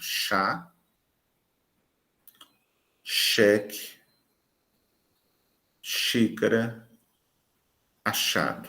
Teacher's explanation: mais doce da língua né a parte mais alta da língua o articulador passivo é a parte média do palato duro e isso é o céu da boca · o dorso da língua, a parte anterior da língua, vai em direção à parte média, à parte central, medial, do palato duro, do céu da boca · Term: fricativa alveopalatal